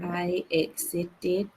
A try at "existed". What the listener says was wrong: can you say this again with a longer s